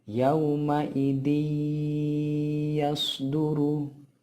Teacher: nun sukun atau tanwin tersebut dimasukkan menjadi satu dengan huruf sesudahnya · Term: idgham bigunnah